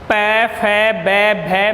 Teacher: जब भी हम इन वर्णों का उच्चारण करते हैं तो ऊ बोलते ही होठों की आकृति बदलती है। प फ ब भ मैं बोलने पर होठ परस्पर स्पर्श करते हैं तो इनका उच्चारण स्थान ओष्ठ होता है।